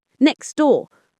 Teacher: In casual speech, we often drop that T. Next door. The T simply vanishes.